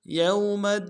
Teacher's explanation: یا کو واو کے ساتھ ملانا ہے، واو لین بغیر کھینچے پڑیں گے